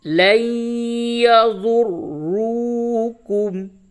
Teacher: لام یا زبر لین، یا زبر یا، لین، نون ساکن کے بعد حروف یرملون میں سے یا آیا، ادغام مع الغنہ ہوگا، لین، ضاد را پیش ذر، را واو پیش رو، کاف میم پیش کم، لن یضروکم، واو مدہ ہے، اس کو تھوڑا سا کھینچیے